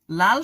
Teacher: জীভের ডগা দন্তমূল স্পর্শ করে এবং ফুসফুস থেকে আসা বাতাস জীভের দুই পাশ দিয়ে বেরিয়ে যায় তাকে পার্ষিক ব্যঞ্জন বলে।